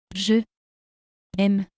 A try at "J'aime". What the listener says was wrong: Here, since we have two vowels, the first one is eliminated and an apostrophe is put. It becomes,